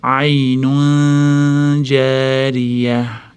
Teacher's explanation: Aynunda ixfa kelyapti. Jni chiqadigan joyga tanvinni yashiramiz.